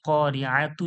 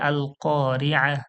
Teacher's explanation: করে পড়তে হয়, হা সাকিন করে পড়তে হয়। তাহলে আল করিআতু ছিল, ওয়াক করলে আল করিআ, হা হয়ে যায়।